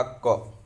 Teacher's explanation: अल्प प्राण जैसे मैंने कहा क, अल्प प्राण किसको कहेंगे? तो बोलते समय कम हवा निकलती है अल्प प्राण